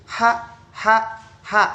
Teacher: bunyinya keluar daripada epiglottis atau tenggorokan dan juga oral atau mulut. Kita rasakan nih, H, H, H.